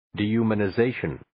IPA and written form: ,di,hjumʌnʌ'zeɪʃʌn (Dehumanization)